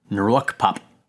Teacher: it also sounds weird because there's a little bit of a breath before it.